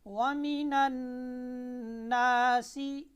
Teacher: गुन्ना की मिकदार एक अलिफ है